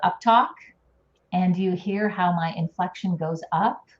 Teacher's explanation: My pitch goes up at the end of my sentence.